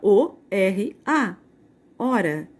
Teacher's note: o h não tem som então eu só vou pronunciar a palavra o r a hora